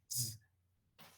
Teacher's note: habría una sonorización de s, y dejaría de ser s, y pasaría a ser z